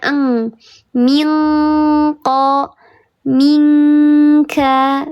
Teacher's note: Karena dia letaknya ada di pangkal lidah, di dekat tenggorokan, dekat khayshum, paling jauh dengan makharijul huruf nun, sehingga bunyikan nun mati di huruf qaf dan di huruf kaf. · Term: ikhfa hakiki yang ab'ad